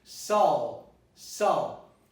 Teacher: Sulfa you can see contains a schwa here, contains a neutral vowel in the beginning.